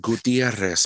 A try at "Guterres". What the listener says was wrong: No, it's not Gutierrez. There's not an I in there. It's Guterres. Look at it again.